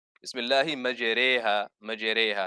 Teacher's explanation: it's basically between the fatha and the kasra, or between the alif and the ya. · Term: imala